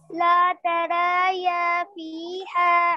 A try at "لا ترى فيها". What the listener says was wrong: Be careful. This is not يا. This is ترى. لا ترى. This is ألف, not يا. لا ترى.